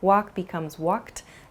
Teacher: You might hear a word like walked also, which has a sort of T sound about it.